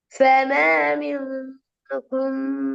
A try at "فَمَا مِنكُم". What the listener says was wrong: இல்ல, கொம் கொம் கொம் மாறிட்டு பாருங்க. அந்த எழுத்து எப்படி தெளிவா ஓதுறேன்டா, மறைக்கப்படாது. فما منكم. فما منكم. கு மிக தெளிவாக கூட உச்சரிப்பு எடுக்கணும். அதை மறைச்சு கொண்டு மழுப்பி கொண்டு உச்சரிப்பை தெளிவில்லாத மெத்தடுக்கு சமாளிச்சு கொண்டு போக இயலாது. மிக தெளிவா எடுக்கணும். அல்லது பிழை. தொண்டையிட முன்பகுதியும் நாவையும் தொண்டையும் முடியுமான வரைக்கும் நல்லா முன்னுக்கு பட வைக்கணும். கொம்மண்டுச்சுன்னா நடுவுக்கு போய்க்கும். கோ நடுவுல கோன்னா இன்னும் பின்னுக்கு போகுது.